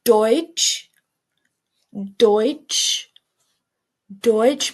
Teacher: More rounded than the English oi